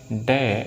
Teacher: उच्चारण स्थान दोनों का ही मूर्धा से होता है, यानी मूर्धन्य से होता है, और दोनों के दोनों ही सघोष होते हैं।